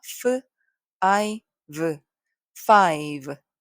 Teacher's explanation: 모두 입술, 이 같은 위치에서 소리가 납니다